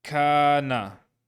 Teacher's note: So in this case, we have the kaf, and the kaf is being lengthened to give the long ka sound